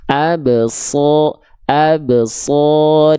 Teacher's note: ketika melafalkan huruf shad teman-teman desisannya kerasa. Nah, itu desis namanya.